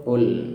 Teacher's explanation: Ya, ingat di situ huruf Qaf ya, yang mana makhrajnya adalah agak ke belakang ya, agak di belakang pada lidah. Jadi makhrajnya di lidah bagian belakang yang menempel ke langit yang bagian belakang ya, yang bagian lunak. Jadi suaranya agak ke dalam sedikit.